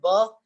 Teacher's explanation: When I say ba, then also two lips are touching each other. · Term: bilabial